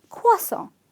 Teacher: Okay, so the R is silent. There's an invisible W that appears in the pronunciation.